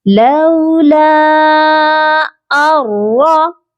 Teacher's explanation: نون کی آواز کو بالکل میوٹ کر دینا ہے، بالکل بھی اس کے ساؤنڈ کو ہم نے پرومیننٹ نہیں کرنا۔ لولا ارا، اس کے بعد ہے حمزہ اور اس کے اوپر کھڑی زبر ہے، اس کو ہم نے سیپریٹ پڑھنا ہے۔